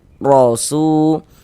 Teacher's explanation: Maka ini huruf ro kita baca tabkhim, kita baca tebal. Nah, sehingga dengan menaikkan pangkal lidah kita ketika kita mengucapkannya. Rosu Su dibaca panjang.